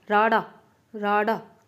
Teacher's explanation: ਜੀਭ ਤਾਲੂ ਨਾਲ ਛੂ ਕੇ ਫਟਕਵੇਂ ਨਾਲ ਹੇਠਾਂ ਮੁੜਦੀ ਹੈ, ਭਾਵ ਕਿ ਐਵੇਂ ਇੱਕੋ ਦਮ ਨੀਚੇ ਉੱਠਦੀ ਆ, ਤਾਂ ਉਹ ਫਟਕਮਾ।